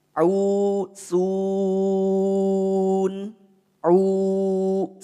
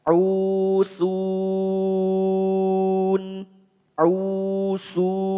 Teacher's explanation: Hati-hati saat kita mengucapkan atau membaca mad arid lisukun. Jangan sampai mad arid lid sukun yang kita baca itu mengandung kadar khayshum, mengandung kadar dengung.